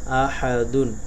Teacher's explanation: হা এর ক্ষেত্রে অবশ্যই গলার ভিতর থেকে উচ্চারণ করতে হবে